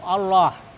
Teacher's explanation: Allah ini dibaca tebal, ya, disebut lamul mufakhamah, ya, lam tebal